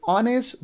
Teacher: sometimes this h sound almost not pronounced at the beginning of a word. Like we have word like honest, we don't pronounce h here, we don't say honest, we say honest.